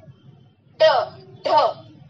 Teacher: पूरी जीभ जो है वो पीछे जाके एक झटके के साथ गिर जाती है। आप उच्चारण करके देखिए, ड, तो जीभ पूरी मुड़ जानी चाहिए और झटके के साथ। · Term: उत्क्षिप्त